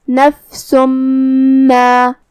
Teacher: ہم یہ تنوین کو میم میں ملا کے غنہ اور تشدید کے ساتھ یہ حکم کو ادا کریں گے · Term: ادغام بغنہ